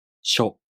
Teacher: To pronounce しょ, the tongue moves from the [ɕ] consonant to the [o] vowel.